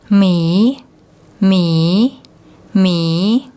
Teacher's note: the class of the initial consonant is high, and because the word ends with a long vowel, it's a live syllable. So the tone rule is a rising tone